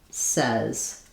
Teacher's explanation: in American English, this has the eh vowel, says. So it's the same vowel that's in red.